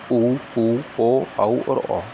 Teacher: भाषा विज्ञान की दृष्टि से ऊ तथा बड़ा ऊ पश्च समृत स्वर हैं। जिन स्वरों के उच्चारण में जीभ का पश्च भाग काम करता है, यानी कि जीभ का पिछला वाला भाग काम करता है, उन्हें पश्च स्वर कहते हैं।